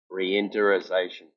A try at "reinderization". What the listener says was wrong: Yeah, but there's another syllable. It's reinderization.